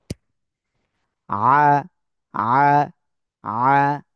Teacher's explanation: আমরা এতদিন পড়েছি অনেকে কি আ যারা আ বলেছেন তাদের ভুল আইন খাড়া জবর আ গলাটা হালকা চেপে তারপরে উচ্চারণ করতে হবে